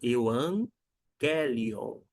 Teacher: o primeiro G G ele vai ter um som de n